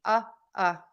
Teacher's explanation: just a relaxed mouth your mouth is slightly open and your tongue is just kind of hanging out in the middle of your mouth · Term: short u